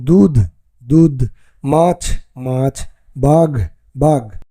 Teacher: নেবে পরে আমরা দেখি শব্দের আদিতে শাসাঘাত থাকলে শব্দের শেষে অবস্থা মহাপ্রাণ ধ্বনি অল্পপ্রাণ ধ্বনিতে পরিণত হয়